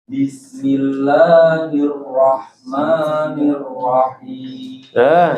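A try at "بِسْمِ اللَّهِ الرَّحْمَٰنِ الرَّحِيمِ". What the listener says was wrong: Cakep. Bagus, tinggal roknya tebalkan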